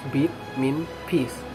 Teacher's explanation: this vowel is nearer to cardinal vowel number one closer and more front although the tongue shape is not much different from cardinal vowel · the lips are only slightly spread and this is result in a rather different vowel quality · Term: long vowels